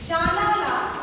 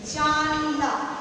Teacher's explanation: শব্দের প্রথমে যা, না লা থেকে জানলা, জানালা থেকে জানলা, অর্থাৎ শব্দের আদিতে শাসাঘাত করার ফলে মধ্যবর্তী স্বর লুপ্ত হচ্ছে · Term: মধ্য স্বরলোপ